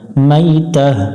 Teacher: এখানে যদি আমরা দম ফেলি তো গোলতাটার উপরে যে পেশটা আছে এই পেশটাকে সাকিন ধরতে হবে এবং গোলতাটাকে হা ধরতে হবে